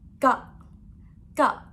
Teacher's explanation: it's go, short sound with falling tone